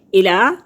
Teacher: لام کھڑی زبر ہے، اس کو 1 الف کے برابر لمبا کریں گے